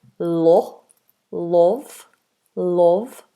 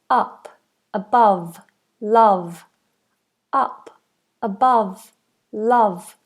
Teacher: So they say love or love but it's actually closer to an a sound. So we want la. So very forwardplaced short vowel uh uh just like when you're saying up above love up above love.